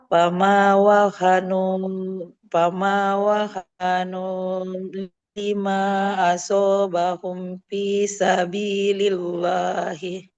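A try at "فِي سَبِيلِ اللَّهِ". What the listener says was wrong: Lamnya tipis aja, Bu. Fisabilillah. Jangan asobahum. 5 asobahum fisabilillah.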